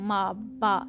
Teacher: जब आप M को प्रोनाउंस करते हैं, मा, बा साउंड को, तो आपके दोनों जो लिप्स होते हैं वो दोनों ही मिलते हैं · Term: बाइलेबियल्स